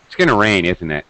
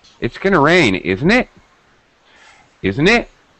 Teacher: if i rise that means it's a real question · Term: pitch change